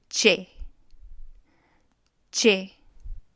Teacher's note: Start with your jaw shut. And I'm starting with the tip of my tongue placed on the roof of my mouth, close to the top set of teeth. So not directly behind it, but close to it.